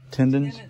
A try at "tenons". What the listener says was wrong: No, there's no D. Just tenons.